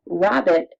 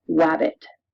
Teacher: W is substituted for R so that rabbit sounds like wabbit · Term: substitution